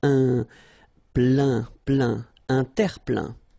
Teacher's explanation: Remember this E-I-N nasal, so it goes in your nose